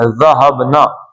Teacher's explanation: زبان کی نوک جو ہے وہ دانتوں سے لگا کے سیٹی کی آواز نہ آئے، پتلا پڑھنا ہے